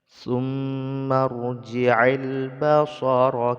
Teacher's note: mim yang bertasdid dibaca gunah